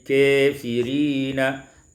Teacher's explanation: Pada ayat yang ke-100 kafirina, imalatu fathatil kaf wal alif, dibaca imalah fathah kaf dan alif menjadi kafirina.